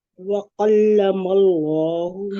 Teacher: जी, वकल्लम अल्लाहु में देखिए काफ बारीक रखेंगे और अल्लाह का जो लाम है उसको मोटा रखेंगे